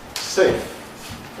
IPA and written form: seɪf (safe)